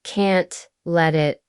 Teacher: Can't let it often sounds like can't let it, with the T almost disappearing. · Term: reductions